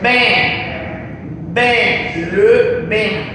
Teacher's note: Ese grabito que está ahí arriba representa la nasalización. E abierta, pero con la nariz